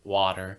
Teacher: Water with the very soft T, like a D, the American one.